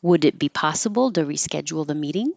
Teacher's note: It's a yes no question, so it goes up.